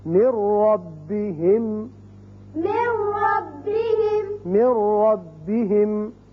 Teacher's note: اب نون نہیں پڑھا جائے گا، میم را سے ملے گا